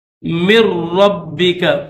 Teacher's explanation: تو اس میں یہ نون ساکن ہے، اس کے اوپر جزم ہے، اور را مشدد ہے، اس کے اوپر تشدید ہے، تو ان دونوں میں سے نون سائلنٹ ہوگا، نون نہیں پڑھا جائے گا، میم کو ڈائریکٹ را کے ساتھ ملائیں گے